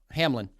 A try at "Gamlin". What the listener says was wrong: Gamlin, It's not Hamlin. It's Gamlin with a G.